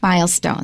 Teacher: 注意那个重音在前面